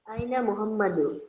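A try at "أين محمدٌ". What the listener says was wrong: Aina Muhammadun. This is not Muhammadu. Muhammadun. Aina Muhammadun.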